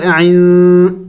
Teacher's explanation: इख़्फ़ा करना है, नून साकिन है यानी नाक में आवाज़ छुपाना है